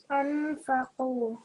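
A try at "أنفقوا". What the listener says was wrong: Make it a tiny bit longer, anfaqu.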